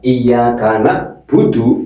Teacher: Kalau dibaca iyaka budu berarti merubah huruf ain menjadi hamzah